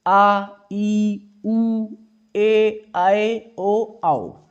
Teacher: ऐसे स्वर जिनका उच्चारण में हस्व स्वर से अधिक यानी लगभग 2 गुना समय लगता है, यानी हस्व स्वर जो है उनसे 2 गुना समय लगेगा तो उन्हें दीर्घ स्वर कहेंगे।